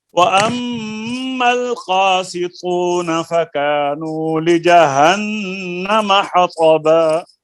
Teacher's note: قاف کو بھی پر کریں, تو کو بھی پر کریں. اور غنہ.